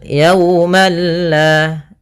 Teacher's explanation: yauma di sini ada waw sukun didahului dengan fathah, maka ini bacaan lin yang dimana kita lembutkan dalam melafalkannya. Kemudian pada lafal yaumalla di sini ada tanwin, ada fathatain bertemu dengan huruf lam.